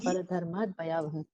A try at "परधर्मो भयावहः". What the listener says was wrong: परधर्म धर्मात नहीं है, परधर्म।